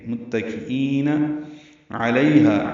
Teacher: متکئین علیہا، عین وسط حلق سے ادا کریں گے، لئی یا لین، ہا الف مدہ ہے، دو حرکات ہا کو لمبا کریں گے، لئی کو ڈیڑھ حرکت لمبا کرتے ہیں.